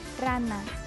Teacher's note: La R suena R, vibrante simple. Alveolar sonora